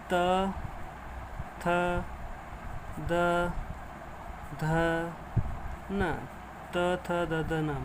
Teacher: ये वर्ण होते हैं अपने दंतई, जो दांत की सहायता से बोले जाते हैं।